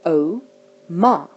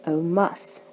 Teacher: This is words with a short vowel ending, which means it ends on a short vowel, but the emphasis is on the first syllable